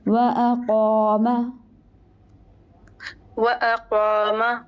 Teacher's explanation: وأقام میں دیکھیے الف ہے، اس سے ماقبل قاف ہے، دونوں موٹے ہوں گے